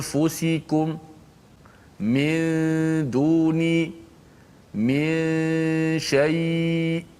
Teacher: Gunnah hanya kekal pada huruf nun, huruf pertama, huruf nun di hidung. Okey, so bila kita kata anfusikum, nun bertemu dengan fa.